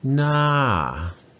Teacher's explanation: Na, first word, na is a falling tone.